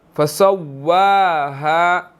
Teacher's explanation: واو کے اوپر کھڑی زبر ہے، اس کو ہم نے 1 سیکنڈ لمبا کرنا ہے